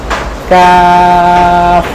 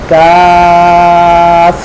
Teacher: কাফটা উচ্চারণ হয় জিহ্বার গোড়া থেকে একটু সামনে